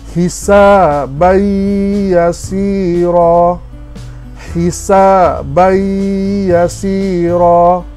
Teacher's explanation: Kita tidak sebut ban, kita akan terus masuk kepada ya, hisabai, dan panjangkan sedikit.